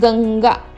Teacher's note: जिव्हा आणि आपलं जे नाक आहे यातून याचं उच्चारण होतं. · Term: अनुनासिक